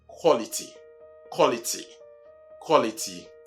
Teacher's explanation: like many other words that begin with QUA, it's not qua, but what? Ko.